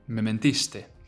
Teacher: The two mes almost merge together when speaking, right?